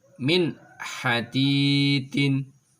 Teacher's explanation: suara nun sukun atau tanwinnya dibaca jelas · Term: idhar halqi